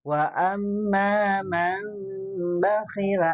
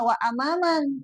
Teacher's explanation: Dalam istilah qalbun nuni sakinati awitanwini mimman bigunatin ma'al ikhfa. Mengubah nun sakinah atau tanwin menjadi mim ketika bertemu dengan ba. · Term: iklab